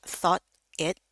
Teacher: boleh dibaca thought it, tapi boleh kayak digabung jadi satu, di sini berubah jadi flap D